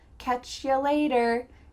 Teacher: we're reducing you to ya, catch ya later.